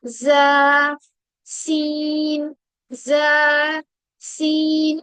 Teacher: और वो कैसे आएगी, देखिए जबान जो है, जबान की जो नोक है वो नीचे वाले दांतों के जड़ों में जाकर लगेगी, रूट्स में लगेगी। ठीक है, उससे क्या होगा, सीटी वाली आवाज अपने आप निकलेगी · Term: हरूफे सोफीरिया